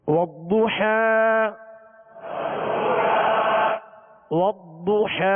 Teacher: ضاد پر پیش ہے ہونٹوں کو گول کر کے پڑھیں گے اور ضاد کو پر پڑھیں گے اس لیے کہ حروف مستعلیہ میں سے ہے اور والضحى حا